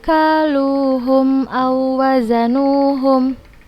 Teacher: tidak membacanya dengan ghunnah tidak ditekan tidak ditahan langsung kita baca ke huruf yang berharakat nya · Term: idgham mutamatsilain